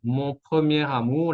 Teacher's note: la R se conecta con la A de amour